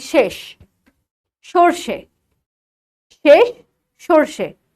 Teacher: মুখে উচ্চারণ করি একটি স সেটা হচ্ছে তালব্যস